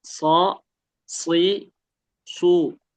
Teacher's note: ketika u itu gerak bibirnya, karena emang dituntut untuk monyong kalau domah ya.